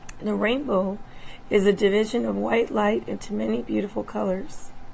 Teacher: i also heard diplophonia and pitch breaks · moderate to severe dysphonia characterized by roughness breathiness weakness and strain when using the gerbis scale i also heard diplophonia and pitch